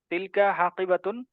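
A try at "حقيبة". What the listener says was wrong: হাকিবাতুন, হাকিবাতুন, হাকিবাতুন, হাকিবাতুন, হ্যাঁ, হাকিবাতুন, হা টান হবে না, হা তাড়াতাড়ি, হাকিবাতুন।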